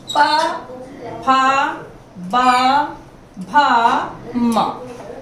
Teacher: पहले बाधा आई, फिर बाधा के हटते ही इसका उच्चारण हो गया। प, फा, बा, भा, म, इस तरह से इनका उच्चारण होगा।